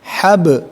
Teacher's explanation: Jadi hab ya, lalu masuk ke huruf ba ya, huruf bibir yang disukun maka menjadi getaran atau pantulan